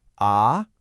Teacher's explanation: Second tone is a rising tone. It's that sound you make when you're confused, like asking, ah?